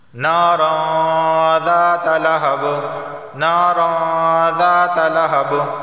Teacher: اخفا والا غنہ ہو رہا ہے، یعنی غنہ ہوگا لیکن ہماری زبان کی نوک اوپر کے تالو سے نہیں لگنی چاہیے، زبان کی نوک نیچے رہے چھپ کر